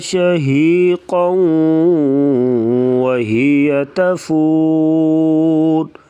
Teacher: یہاں پر ادغام مع الغنہ ہوگا، یعنی غنے کے ساتھ پڑھا جائے گا